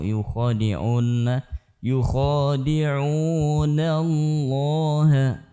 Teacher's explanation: Yukhadi'u, nunnya tidak boleh ditasydidkan dengan waw.